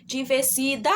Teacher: o da, ele é a sílaba mais forte, é a sílaba mais duradoura na pronúncia, tá bom? Então, essa é a sílaba tônica, é o da sílaba, tá bom?